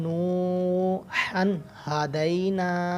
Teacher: یہ ہا حلق سے ادا ہوتا ہے اور اس کی حلق کے درمیان والے حصے سے ادا ہوتا ہے، اس کی آواز نکلتی ہے.